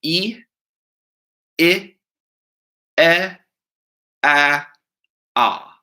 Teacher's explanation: Going from the highest and most forward down to the lowest, we have E, I, E, A, Ah.